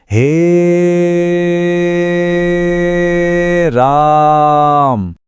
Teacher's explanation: ये वो special case वाले स्वर हैं जिनके उच्चारण में ह्रस्व से तिगुना यानी 3 मात्रा या उससे भी ज्यादा का समय लग जाता है। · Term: प्लुत स्वर